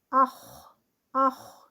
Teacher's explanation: اس میں ہمس مینس کے سانس جاری رہ رہی ہے، آخ. پھر آگے رخاوہ ہے، رخوت ہے، اس میں آواز بھی جاری ہے، آخ، آواز بھی اس میں غین کی طرح جاری رہے گی.